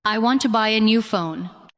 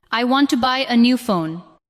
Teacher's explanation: The important words are want, buy, new, and phone. The other words support them. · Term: stress